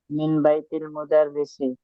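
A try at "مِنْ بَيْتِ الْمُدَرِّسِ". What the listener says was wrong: মিন বাই তু বলতেছেন না তি মিন বাই তি, তি দিয়ে আবার লাম ধরো, মিন বাই তিল মুদারিস, হ্যাঁ।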